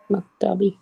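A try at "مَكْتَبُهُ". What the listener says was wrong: হবে না তো, মনে হয়, হ্যাঁ এখানে তো বি হওয়ার কোনো রিজন নাই, মাকতাবুহু,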